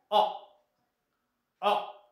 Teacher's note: जिभेचा पाठीमागचा भाग वर जातो, तर हाफ ओपन पोझिशनकडे